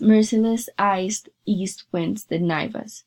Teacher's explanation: he uses the S sound as a sibilant hissing combined with hard consonants such as Z and T, creating a cut sound , which relate to the knifing of the men. In the